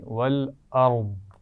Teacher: والارض اس میں را بھی موٹی ہے اور آخر میں ضاد پر ہم ساکن کر کے پڑھیں گے تو ضاد کو بھی موٹا ہونا چاہیے